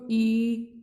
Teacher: संव्रत मुख द्वार पूरा बंद रहता है।